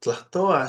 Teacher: tlatoa should have an H, a glottal stop in the middle, okay, which this is completely lacking.